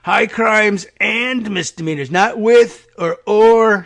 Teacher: He's got a little vocal fry going on as he screams over the whir of the helicopter.